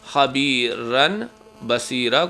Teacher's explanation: نون کی آواز کو میم پڑھنا ہے